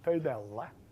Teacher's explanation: the first vowel is round and mid and not back, that is front